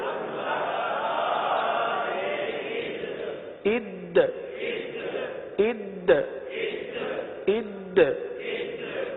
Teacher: اد، اب دیکھیے دال ہے، دال حروف قلقلہ میں سے ہے، دال کو جماؤں کے ساتھ ادا کرتے ہوئے یہاں پر قلقلہ بھی ادا کرنا ہے